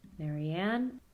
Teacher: the last name has stress on the final syllable, so the low and high are realized on the same syllable, but the low is a pitch accent and the high is coming from the edge. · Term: edge tone